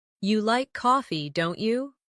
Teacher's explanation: making your voice rise slightly at the end of the tag question